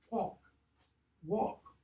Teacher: L of the Middle English, pre-consonantal AL, notice, was lost.